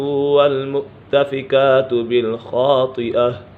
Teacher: خا بھی پر ہے اور طا بھی پر ہے، حرف مستعلیہ میں سے ہے